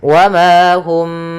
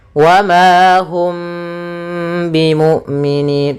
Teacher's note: Yaitu karena huruf mim ini berkenaan dengan makhraj daripada huruf syafah, ya, makhraj yang kita keluarkan dari syafah kita, dari bibir kita, sehingga ketika melafalkan mimnya agak dirapatkan, wa ma hum, tapi tidak serapat mim ketemu mim. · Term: ikhfa syafawi